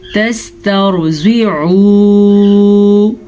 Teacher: ان تسترضعوا، نون ساکن کے بعد تا ہے جو کہ حروف اخفا میں سے ہے، تو ہم نے یہاں پہ نون کو چھپا کے غننے کے ساتھ پڑھا ہے. تسترضعوا، را ساکن سے پیچھے والے حرف پہ زبر ہے تو را پر پڑھیں گے، زواد کو پر پڑھیں گے. زواد ہمیشہ ہی پر پڑھا جاتا ہے.